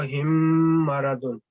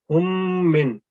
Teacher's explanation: 2 second تک ہم غنہ کرتے ہیں ناک میں آواز، میم کی آواز کو ٹھہراتے ہیں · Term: ادغام غنہ